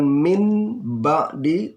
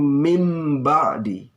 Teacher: Nun sukun berubah menjadi mim sukun. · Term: iqlab